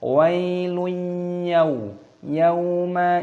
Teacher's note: Perhatikan ada ya sukun dibaca wai, dhammah tanwin bertemu dengan ya, ini hukumnya dibaca idgham bi gunah, dimasukkan dan disertai berdengung